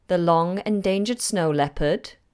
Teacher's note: The long endangered snow leopard, and my intonation goes up because I'm asking a question. Here I've highlighted words and phrases that I think you should be aware of. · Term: rising intonation